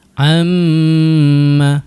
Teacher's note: Jadi rapat dulu kemudian baru dengung.